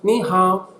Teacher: the hao goes down, the fourth tone